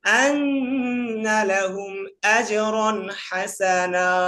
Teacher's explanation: আন্না এখানে ওয়াজিব গুণ হয়েছে